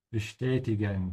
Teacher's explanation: with a sh because of the st